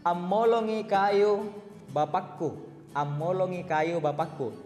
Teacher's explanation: Kata dasar polong artinya potong, ditambahkan dengan imbuhan A, maka penyebutannya menjadi ammolong. Suara nasal, M-nya dijadikan 2, double.